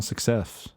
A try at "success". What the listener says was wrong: you are like clearly adding syllables to some of the, you said success.